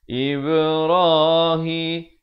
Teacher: di sini kena berikan pantulan ba huruf qalqalah